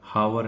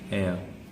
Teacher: the beginning sound of the word becomes a vowel sound, as an hour.